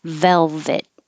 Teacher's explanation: make sure your top teeth are right behind your bottom lip. And you have a lot of vibration. It's like the F position, but with voicing. Velvet. And you don't have to release the T, hold it. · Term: V words